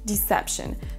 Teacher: C'est vraiment un i court et pas un i long comme le fait Mbappé.